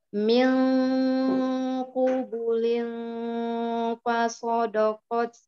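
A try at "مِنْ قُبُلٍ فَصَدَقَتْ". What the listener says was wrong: Dalnya jangan ikut tebal. Soda, do, da.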